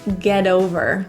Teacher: The T in get becomes a flap T because it's surrounded by vowels. So in this case, it's not pronounced as a T, more like a really quick D.